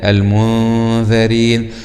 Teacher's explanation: كذلك في هذه الكلمة المنذرين، حرف الذال من حروف الاستفال وهو من حروف الإخفاء، فالغنة هنا تكون مرققة في حرف النون · وننتبه لمخرج الذال من طرف اللسان مع أطراف الثنايا العليا